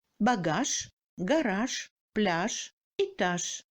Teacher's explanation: En fin du mot, le j s'assourdit et se prononce comme ch.